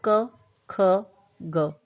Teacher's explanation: आप बोल के देखिए, क, ख, ग। क और ग को बोलने पर प्राण वायु का दबाव कम होता है, जबकि ख को बोलने पर ज़्यादा होता है